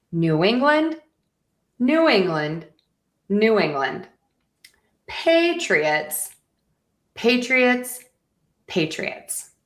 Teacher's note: So, we sort of have that low, high, low, high, low pattern.